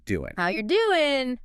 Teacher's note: The ing sound at the end of doing, that sound you make at the back of your throat, is often shortened to just an in sound.